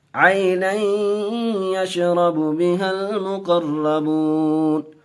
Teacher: عین آئی، یہاں یائلین کا قاعدہ، جلد پڑھیں گے. آئی کھچیں گے نہیں